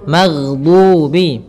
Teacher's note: Kesalahan yang sering terjadi adalah memantulkan huruf ghain, yang mana pada dasarnya huruf ghain tidak boleh mantul, tetapi dia memiliki sifat yaitu mengalir suaranya